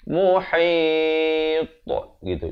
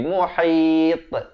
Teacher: Dan pada ta dibulatkan mulut.